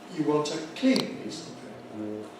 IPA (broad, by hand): ju ˈwɒnt ə ∖_kliːn_ ₒpiːs əv ₒpeɪpə